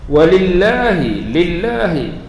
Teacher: lafzul jalalah dibaca dengan nipis sebab sebelumnya huruf baris bawah.